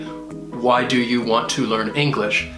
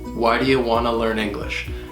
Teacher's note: You can't say it too slow because the whole idea about the schwa is you're reducing those unstressed sounds. The words why, learn, and English are easy to hear, but the words in the middle, do you wanna, get reduced. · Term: schwa sound